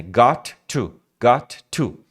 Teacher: quando você tem dois plosives dois sons de t no caso né got to got to você elimina um então o trecho que seria when we got vai virar when